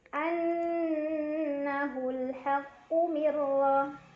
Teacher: Ada idgham bila gunnah karena ada nun sukun yang bertemu dengan huruf ra. Cara bacanya nun sukun dimasukkan ke huruf ra tanpa berdengung, jadi cukup ditekan. Mirra, ra dibaca secara tafkhim karena ra berbaris dan barisnya di atas, jadi dibacanya tebal.